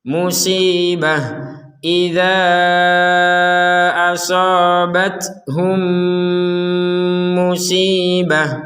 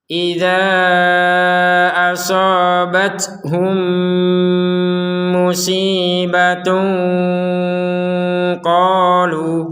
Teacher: Di sini ada ta bulatnya. Ta berbentuk bulat ini barusan kita bacanya ha ya.